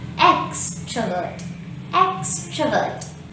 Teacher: in the word extrovert we have three syllables the first syllable here is stressed · The first syllable here is stressed. So say extrovert.